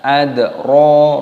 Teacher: dalnya berharokat sukun, maka dipantulkan suaranya, dibaca adro, ronya dibaca panjang, adro kama, memnya dibaca panjang, ada tanda alifnya di sini, matobi'i 2 ketukan, mahiyah, wa ma adro kama hiyah.